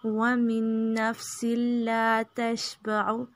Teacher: یہاں پہ ادغام ہے تو ایک نون پڑھا جائے گا، نون ساکن والا جو ہے وہ نہیں پڑھیں گے. ومن میم کو نون میں داخل کریں گے.